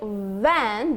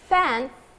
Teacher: van the vocal cord vibrate but fan there is no vibration